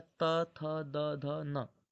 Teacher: त वर्ग दंत से बोला जाता है। त थ द ध न मतलब बिना दांत के इसे नहीं बोल सकते।